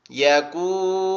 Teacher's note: তারপরে ইয়াকুনুনা, এখানে দুইটা টান হবে, একটা হচ্ছে আপনি দেখেন এই যে পেশের বাম পাশে যজমালা ওয়াও আছে, পেশের বাম পাশে যজমালা ওয়াও, আবার এখানে হচ্ছে পেশের বাম পাশে যজমালা কি আছে, যজমালা ওয়াও আছে, তাহলে দুইটা যজমালা ওয়াও থাকায় দুইটা টান হবে